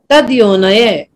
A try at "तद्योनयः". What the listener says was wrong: नया तदो नया। दो पे थोड़ा सा भार हमें देना है बोलते समय चैक सशक तदो नया थोड़ा सा इसका उच्चारण में दो पे जोड़ा हमें तदो नया।